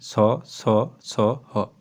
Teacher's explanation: अच्छे से उच्चारण करेंगे तो ऊष्म व्यंजन ऊष्म अर्थात गर्म होता है। ऐसे व्यंजन जिनका उच्चारण करते समय वायु मुख में रगड़ खाकर कुछ ऊष्मा के साथ बाहर आती है। अर्थात उच्चारण के समय मुंह से गर्म हवा निकलती है वे ऊष्म और संघर्षी व्यंजन कहलाते हैं।